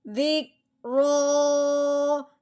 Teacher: رو کے اوپر کھڑی زبر ہے، رو کو پر پڑھیں گے اور ایک الف کے برابر لمبا کریں گے کھڑی زبر آنے کی وجہ سے. رو کھڑی زبر رو، ذک رو.